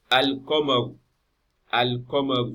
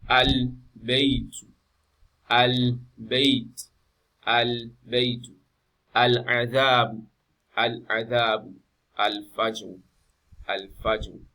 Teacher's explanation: So the lam is clearly pronounced. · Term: lam al-Qamariya